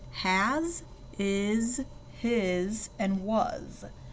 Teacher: This is different from, say, the word sit, where our S makes that S sound. Here our S is making a Z sound, like a Z, and that's why we call it a voiced S.